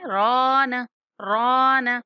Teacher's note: بل ران، بل ران، اس طرح کریں گے، سانس نہیں توڑنا، یہ کہ کچھ دیر یہاں پہ ساکت رہنا ہے آپ نے۔ نون کو کھینچنا نہیں ہے، رانا ایسے نہیں پڑھیں گے